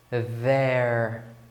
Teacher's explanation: Esse DH na transcrição fonética, que eu coloco a língua aqui entre os dentes